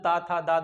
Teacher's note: उसके बाद उसके बाद द हवा जो है वो आती है दांत के पास। तो अगला जो त थ द धा है जीभ क्या होती है जाके दांत में टच करती है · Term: त वर्ग